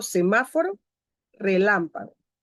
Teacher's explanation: llevan el acento en la antepenúltima sílaba